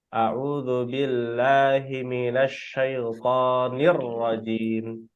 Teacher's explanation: ke ro itu gak ada wawu, jangan sampai terdengar neurajim.